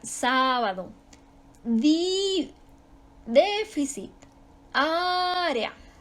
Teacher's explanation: Su sílaba tónica va en la antepenúltima sílaba de derecha a izquierda. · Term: Esdrújulas